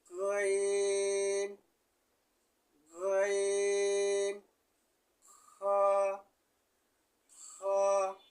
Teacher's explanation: হলকে শেষ ভাগ হইতে 3 নম্বর মাখরাজ উচ্চারিত হয়।